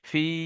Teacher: ফাটা টান হবে, কিন্তু হাটা শুধুমাত্র জের হারাকাত এটা টান হবে না, কিরকম, ফিহি, এরকম।